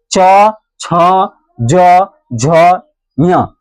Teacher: इसका उच्चारण करते वक्त जीभ हमारा कहाँ टकराता है? तालु में टकराता है। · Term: तालव्य